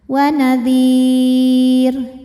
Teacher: Huruf yang disukunkannya adalah huruf ro. Jadi dal dipanjangkannya boleh dua, boleh empat, boleh enam harakat, tapi harus konsisten dalam satu kali bacaan. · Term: mad arid lukun